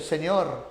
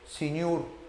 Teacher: Por eso que un quecho hablante no dice señor, sino como dice señur